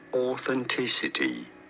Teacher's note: You do want to stress on the third syllable.